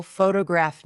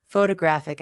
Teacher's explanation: photograph noun is stressed on the first syllable. Photographic adjective is stressed on the third.